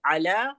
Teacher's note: علی عین سے ہے، وہاں عین کی ادائیگی ہوگی حلق کے درمیانی حصے سے